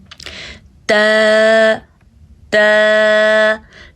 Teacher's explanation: ت زبان کی نوک جب اوپر والے دونوں دانتوں کی جڑ میں لگتی ہے تو تا ادا ہوتا ہے، لیکن اس کو نرمی سے پڑھا جاتا ہے۔